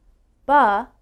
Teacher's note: the first sound ba is called a voiced sound if you put your hand on your throat you should feel a little bit of a vibration